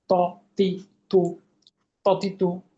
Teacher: জিহ্বার আগাটা উপরের দাঁতের গোড়ার সঙ্গে লাগিয়ে, কিভাবে? মোটা ঊর্ধ্বমুখী কলকলা